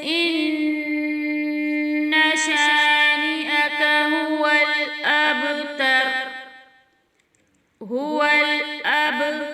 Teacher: با کی آواز اس کی مخرج میں رکے گی نہیں بلکہ پلٹ کر واپس آئے گی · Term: قلقلہ اکبر